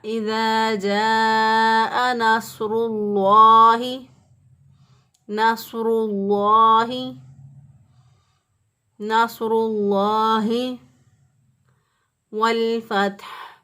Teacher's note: لفظ اللہ کے درمیان والا جو لام ہے اس لام کو موٹا پڑھا جائے گا